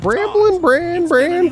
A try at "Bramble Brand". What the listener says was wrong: I thought it was Bramble Brand. You said Bramblin'. No, it's not Bramblin'.